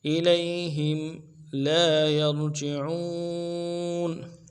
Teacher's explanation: لا یرجعون میں یا کو را کے ساتھ ملانا ہے، را کو موٹا کریں گے